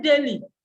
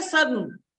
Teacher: you are releasing the air not through your mouth but through the nose, so it can become nasalized